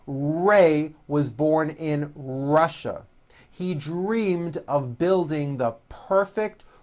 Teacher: notice how my lips come forward on all my r's and w's